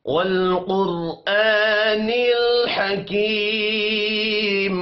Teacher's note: قوف موٹا پڑا جائے گا۔ را ساکن ہے، را کو بھی موٹا پڑھیں گے کیونکہ را ساکن سے پچھلا حرف پیش والا ہے